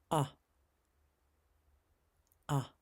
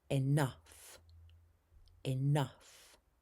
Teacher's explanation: Drop your jaw. This is a short sound in the back of your throat. A as in enough. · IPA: /ʌ/